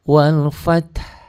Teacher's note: Wal fath dan diikuti bunyi ha mati dengan suara rendah.